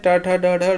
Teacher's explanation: मूर्धन्य से बोले जाते हैं